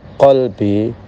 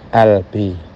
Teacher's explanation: di Mesir, di Syria, qaf itu diucapkan dengan hamzah.